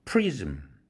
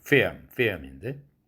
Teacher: 프리즘 할 때만 성절자음 구실을 하고 필름 할 때는 성절자음 구실을 못하는